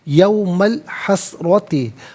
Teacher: وَأَنذِرْهُمْ یوم علیحدہ، الحسرتی علیحدہ، یوما میں میم پر زبر ہے، اس سے الحسرتی کے لام ساکن کے ساتھ ملائیں گے، درمیان میں سے الف یعنی حمزہ کو حذف کیا جائے گا، اسے ہم پڑھیں گے یوم الحسرتی، را پر زبر، را کو پر کر کے پڑھا جائے گا۔